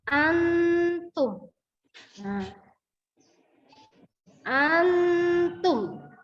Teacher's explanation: yang warna hijau ini Mengandung hukum bacaan tajwid yaitu ikhfa dan cara membacanya ialah dibaca samar setengah dengung tapi tidak terlihat dengung